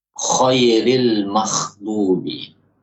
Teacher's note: Ketika seseorang mengucapkan ghain dengan mengeluarkan hamas, nafas, membuat nafasnya mengalir, maka yang terjadi suara ghain tersebut berubah menjadi kha.